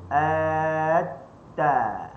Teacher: kalau kita letak hujung lidah kita di gusi ta jadi huruf ta